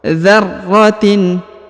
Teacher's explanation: Mithqala dzarratin. Perhatikan huruf ra bertasdid, maka dia ditahan dan ditekan 2 harokat